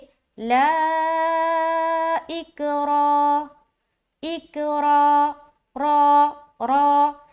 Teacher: देखिए, रा का मामला ये है कि रा के ऊपर ज़बर या पेश आए तो रा को क्या करना है? मोटा पढ़ना है, पुर करके पढ़ना है, भर के, मुंह भर के पढ़ेंगे